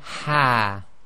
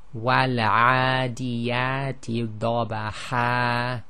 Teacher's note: when one stops on the fathatain, when it's followed by an alif, then the hidden noon sakin, which is known as the tanween, is actually substituted for the alif. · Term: substitution mad